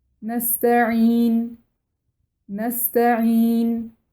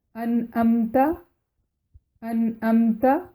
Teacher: عین کی آواز حلق کے درمیانی حصے سے نکلتی ہے اور حمزہ کی آواز حلق کے نچلے حصے سے نکلتی ہے